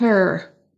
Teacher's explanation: Et ensuite, on traîne sur le E. Et le R, on l'entend à peine